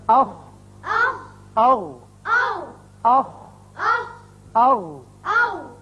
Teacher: اس میں ہے اخ، اغ، اخ، اغ. یعنی دونوں مخارج میں آواز حلق کے اوپر والے حصے میں جا کر رکی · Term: اقصی حلق